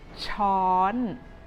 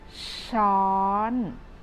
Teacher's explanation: In Thai, a spoon is called a ช้อน It is very easy for you to start pronouncing this word with shaw and gradually rising your tone a little bit higher